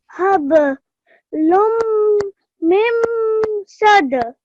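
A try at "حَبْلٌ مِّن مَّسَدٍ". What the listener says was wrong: Just you forgot the ma. Hablum mim masad.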